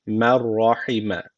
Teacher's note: illa merra derken burada cezimundan sonra ra gelmiş. İdğam-ı bilagune var. Buradaki ra harfini şeddeyle okumamız gerekiyor.